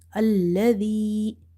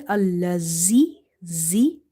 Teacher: Dhal should be pronounced from the tip of your tongue. It touches the inner edges of your top two front teeth. Okay. Dhal is from the tip of your tongue when it touches the inner edges of your top two front teeth.